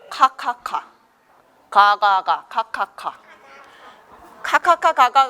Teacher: 이런 소리는 혀에 뿌리를 목구멍을 막았다가 띄는 소리예요.